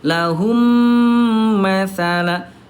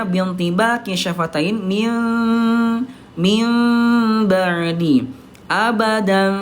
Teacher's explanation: bibirnya tidak betul-betul dirapatkan banget seperti halnya mim bertemu dengan mim